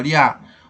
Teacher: ditongo oral, encontro de duas vogais numa mesma sílaba · Olha o I e o A que ficam juntos na mesma sílaba.